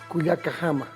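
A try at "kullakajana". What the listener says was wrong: Cuyacajana. Cuyacajana. Cuyacajana. Cuyacajana. Una vez más, no se olvide el sufijo na.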